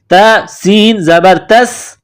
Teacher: जबर ला वाला ता को सीन के साथ प्लस करना है सीन में सीटी की आवाज पैदा करनी है